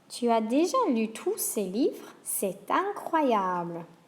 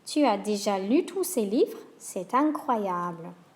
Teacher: You can hear a little liaison there between the T and the vowel.